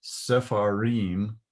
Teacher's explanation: The way sepharim is pronounced, the shva gets a little bit of pronunciation. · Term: vocal shva